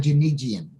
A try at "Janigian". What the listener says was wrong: It's actually a hard G, Janigian.